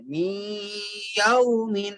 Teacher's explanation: می نون کے بعد ناک میں پھر آگے یا سے ملا دیں